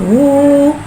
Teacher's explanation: हा के ऊपर उल्टा पेश को एक अलिफ यानी 2 हरकत के बराबर खींच के पढ़ेंगे और उल्टे पेश को होठों की गुलाई के साथ अदा करके पढ़ेंगे